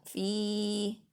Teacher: Terus ini fi kasroh ketemu ya sukun, ini adalah mad tobi'i, bacanya panjang 2 harokat atau 2 ketukan